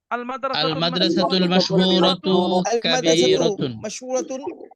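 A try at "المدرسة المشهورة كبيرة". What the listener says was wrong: কাবীরাতুন, মাশাআল্লাহ।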